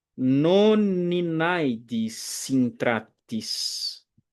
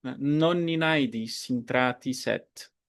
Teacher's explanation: Eu junto uma consoante final com a vogal, com a próxima vogal.